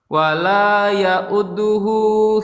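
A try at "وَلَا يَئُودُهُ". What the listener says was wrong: Jangan jangan ditekan. Bagian dalnya jangan ditekan. Wala ya'uduhu gitu.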